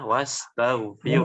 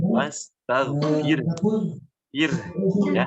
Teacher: Tinggal sedikit di kata-kata wastaghfir. Itu ro-nya keadaannya tipis ya. Tidak dibaca tebal.